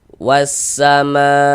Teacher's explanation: Nah, maka dia berubah menjadi mad wajib muttasil. Panjangnya mad wajib itu wajib dibaca panjangnya itu 4 sampai dengan 5 harokat. Minimalnya ya, atau paling pendeknya mad wajib dibaca dengan 4 harokat.